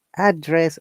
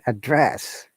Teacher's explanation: When you're saying address, our tone is going down. We're stressing in the first syllable, address. When you're using as a verb, we're stressing the second syllable, address. Is rising intonation.